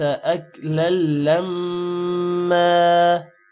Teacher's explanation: لام کے ساتھ ملے گا اور میم پر غنہ ہوگا